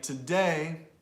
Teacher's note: Syllabic stress means only one syllable really gets the most volume or length. So a word like today stresses the day, not the t.